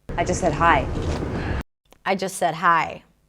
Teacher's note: Again, another example of just that is reduced. The T is dropped and it's connected to the next word.